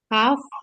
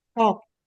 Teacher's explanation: Kaf dia di lidah tengah, kof lidah paling belakang.